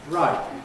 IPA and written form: raɪt ̚ (right)